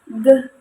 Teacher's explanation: dia merupakan kata bersuara karena ketika sebelum memasuki vokal e itu dia itu sudah menghasilkan getaran, jadi kayak nah, dia tuh ada dengungan, kayak dengungan gitu.